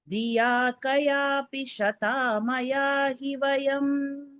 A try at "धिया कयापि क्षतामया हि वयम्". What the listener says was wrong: இக்கு போட்டுக்கோங்க, ஷதா இல்ல, இக்ஷதா. சோ கயாபி க்ஷதா. क्षतामया हि वयम्.